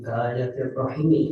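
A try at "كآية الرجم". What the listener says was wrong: rajmi kayak ada titiknya rajmi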